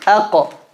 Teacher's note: Both of them, the back of the tongue is touching the palate. However, the kaf is a light letter and the qaf is a heavy letter.